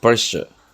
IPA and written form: ˈprɛʃə (Pressure)